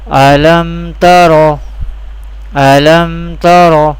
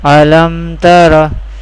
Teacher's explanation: We pronounce the Izhar-e Shafawi without Hunna or without nasalization. We do not take our sound into the nose. Alam Tara. This is the example of Izhar-e Shafawi.